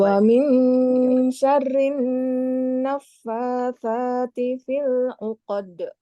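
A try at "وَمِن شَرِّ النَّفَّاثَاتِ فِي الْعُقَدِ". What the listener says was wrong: Fil 'uqad. Agak cepat. Fil 'uqad.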